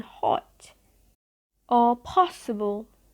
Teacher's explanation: The so-called short O, which often appears in a stressed syllable with one letter O, such as in dog or model, underwent a change in American English. In British English, that sound is pronounced as an open back rounded short sound O, as in hot or possible.